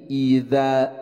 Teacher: pelafalan huruf hamzah ketika dikasrahkan i dibaca i bukan e, tapi jelas dibacanya i.